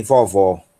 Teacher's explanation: nós temos o ômega, que é o som do nosso O aberto, tá? Como em vovó, ok?